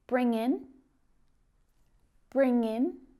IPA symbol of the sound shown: ɪn